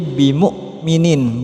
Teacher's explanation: Di sini hamzah bukan ain, jadi bimu'minin bukan bimu'minin.